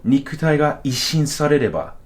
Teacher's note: pitch accent stays exactly the same. Like you're not going up and down in pitch.